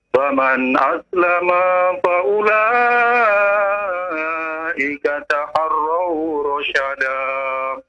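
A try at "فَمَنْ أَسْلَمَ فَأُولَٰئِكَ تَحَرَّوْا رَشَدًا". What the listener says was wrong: Ya, lihat panjang pendeknya apa ya? Faman aslama, ya itu jangan terlalu panjang ya.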